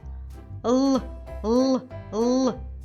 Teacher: Приголосний. Видихуване повітря не виходить вільно, зустрічає перепону. Язик та зуби. Вимовляємо твердо чи м'яко.